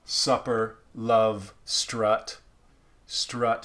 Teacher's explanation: americans in general take our uh sound and we go up we kind of bring it forward